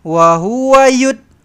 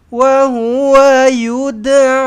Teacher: Wahua yuda. Kena lantunkan dal ni eh. Kena lantunkan qalqalah sughrah.